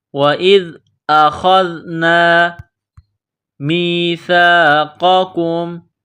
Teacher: میم کو یا کے ساتھ ملانا ہے، سا کو نرم کرنا ہے۔ میثاقکم، قاف کو موٹا کرنا ہے، اس کاف کو باریک کریں گے۔